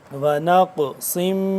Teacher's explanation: قاف ہے اور اس پہ جزم ہے تو ساکن ہو گیا یہ قاف، تو اس پہ ہم قلقلہ بھی کریں گے